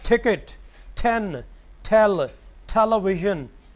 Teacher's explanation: number 1 ट, जब ये एस्पिरेटेड नहीं होगा और जब ये लफ्ज़ के शुरू में आएगा तो it would always be pronounced as ठ